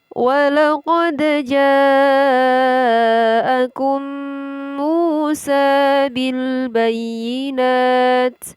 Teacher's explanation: Mu adalah hukum bacaan mad tabi'i ditandai dengan huruf waw sukun didahului harokat dhammah. Mim harokat dhammah ini dibaca panjang. Panjangnya 1 alif, 2 harokat atau 2 ketukan.